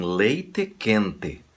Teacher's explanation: No sul do Brasil, em algumas cidades, eles pronunciam corretamente. E é E, não importa onde está.